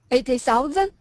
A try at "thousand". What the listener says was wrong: Get that TH. 80,000. Thousand. Thousand.